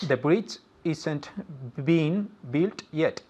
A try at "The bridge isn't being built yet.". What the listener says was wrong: Very good. One more time, more confident because you said it perfectly.